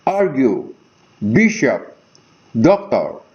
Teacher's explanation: Now, notice here, this is a word composed of 2 syllables. The first syllable here is stressed, followed with unstressed syllable. And this type of arrangement is called trochee.